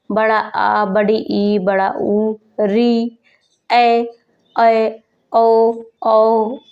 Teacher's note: इन स्वरों के उच्चारण में ह्रस्व स्वरों की अपेक्षा 2 गुना अधिक समय लगता है। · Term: दीर्घ स्वर